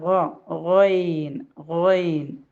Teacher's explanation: റോയിനും തൊണ്ടയുടെ അക്ഷരം തന്നെയാണ്, പക്ഷെ അത് പുറപ്പെടുന്നത് തൊണ്ടയുടെ മുകൾ ഭാഗത്തു നിന്നാണ്.